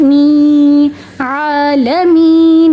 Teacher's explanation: جیسے آ کو کھڑا زبر کی وجہ سے 1 سیکنڈ تک کھینچا، می کو یا مدہ کی وجہ سے 1 سیکنڈ تک کھینچیں گے